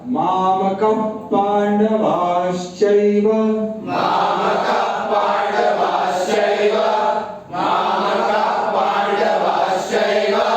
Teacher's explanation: का विसर्ग के बाद प है, तो विसर्ग का उच्चारण नहीं होगा